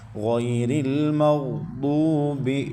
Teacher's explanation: واو ساکن اس سے پہلے پیش، تو یہ واو مدہ ایک الف تک کھینچیں گے